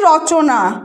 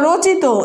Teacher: এখানে রয়ের সাথে কিন্তু ও উচ্চারিত হচ্ছে